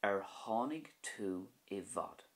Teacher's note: So you can hear the H sound on the tháinig part of that sentence.